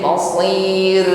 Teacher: Fabi'sal masir, bukan si masir tapi masir, tebal, masir, ditutup dengan ro-nya kita ucapkan dengan takrir, namun takrirnya ringan saja